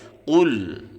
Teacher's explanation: Qul, kita harus keluarkan suara kita dari pangkal lidah ya. Kita angkat pangkal lidah sehingga suaranya menebal. Qul, jangan sampai salah dengan kaf. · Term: huruf isti'la